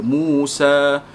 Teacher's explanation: Yang ada alif maksurah ini, dia kita sambung ataupun kita berhenti, kita memang sebut alif maksurah tersebut. Dibaca 2 harakat pada bila-bila masa.